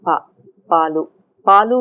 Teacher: We also say pa without aspiration. Pa, palu. Palu we don't aspirate, right? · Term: voiceless unaspirated